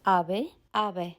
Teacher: Cuando se pierde esa S final, nos deja una marca en la vocal anterior que se abre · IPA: ['a.β̞e] ['a.β̞ɛ], ['a.β̞e]